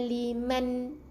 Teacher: Jadi zalika liman, nun yang tanda mati, jelaskan sebutan n tu tanpa dengung.